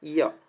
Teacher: य को हम तालव्य वर्ण बोलते हैं। जब हम य बोलते हैं तो क्या होता है? हमारा जो जीभ है वो तालु की ओर जाने लगता है